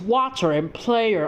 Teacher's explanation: Spoken Manglish is similar to the standard variety of English in Singapore and Britain, in that the final R consonant is dropped during speech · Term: non-rhotic